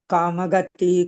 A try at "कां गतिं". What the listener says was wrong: कांग गति नहीं है, गतिम है।